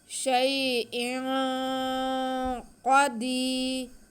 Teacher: हरूफ मुस्तालिया में से क़ाफ़, इसको हम मोटा करके पढ़ेंगे। शैइन क़दीर, दाल के नीचे देर या साकिन या मद्दा हो गया, इसको हम खींच के पढ़ेंगे।